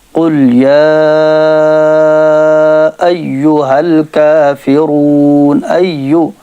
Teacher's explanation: یا مشدد ہے، یا کو سختی سے پڑھیں گے